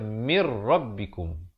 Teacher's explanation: nun mati bertemu ra, idgham bila gunnah masuk tanpa dengung. Asalnya min rabbikum jadi baca mir rabbikum.